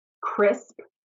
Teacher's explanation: crisp starts in the back and goes to the front